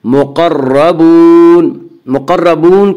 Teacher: اس کا قاعدہ یہ ہے کہ را مشدد متحرک کے اوپر زبر اور پیش آئے تو پر پڑھیں گے، را مشدد متحرک کے نیچے زیر آئے تو را مشدد متحرک کو باریک پڑھیں گے۔ یہاں را مشدد کے اوپر زبر ہے اس سے را مشدد کو پر پڑھیں گے